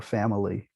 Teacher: If from English we think of schwa as being generally an unstressed vowel, like the medial syllable family, three syllables. Typically a very short and unstressed mid-central vowel